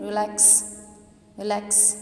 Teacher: Stress आपका लैक्स पे आया। रिलैक्स as compare to रिलैक्स जो है वो ज़्यादा लाउडली बोला जाता है।